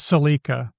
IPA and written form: səˈlikə (Celica)